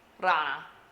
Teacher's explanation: We're doing that quick flip of the tongue to pronounce the R.